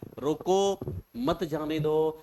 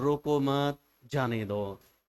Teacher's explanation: एक में रोको पे थोड़ा सा लोड लगा दिया, जोर लगा दिया हमने, एक पे हमने मत पे कह दिया